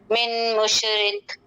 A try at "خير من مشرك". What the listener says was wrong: جی خے نہیں کریں گے، خی، خیر من مشرکن،